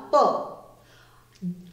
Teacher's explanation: प बोलते समय क्या हो रहा है? दोनों होठ आपस में मिल रहे हैं, तो प का उच्चारण स्थान हुआ होठ या ओष्ठव।